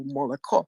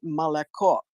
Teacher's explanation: In Russian, you have to say malako. You only say a true O on the last accented syllable.